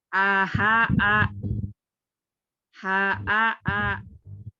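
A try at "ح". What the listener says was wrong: Tuh masih ada aha, aha, a.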